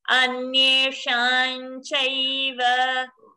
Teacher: There is no makara. It is chavarga. Chavarga's anusvara is nya.